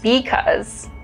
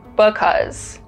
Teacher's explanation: another remarkable feature of chicano english is that there's less vowel reduction